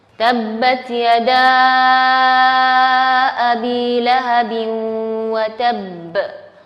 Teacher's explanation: satu sifat istimewa huruf ba itu adalah al-qalqalah atau memantulkan suara